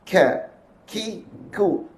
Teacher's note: Apa sifat huruf Kaf satu tahan satu lepas sifat hurf ka menahan suara melepaskan nafas